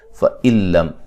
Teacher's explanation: نون ساکن کا ادغام لیکن بلا غنہ، غنہ نہیں کریں گے